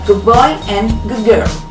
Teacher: The D sound becomes the B sound in good boy and the G sound in girl.